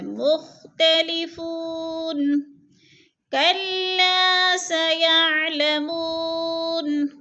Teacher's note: کلا کو تھوڑا سا کھینچیں گے، الف مدہ ہے اور لام مشدد ہے، سختی سے پڑھیں گے